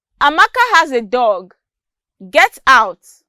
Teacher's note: The falling intonation is rather calm and unemphatic. That means there is no stress when the word is being pronounced.